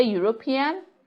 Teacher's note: you say European that begins with the sound ye which is a consonant sound